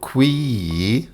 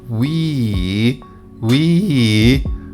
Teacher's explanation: the ee is long with a rising and falling tone